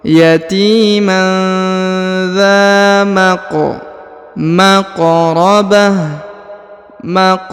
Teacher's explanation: huruf q berharakat sukun ya maka dia dibaca pantul atau Qalqalah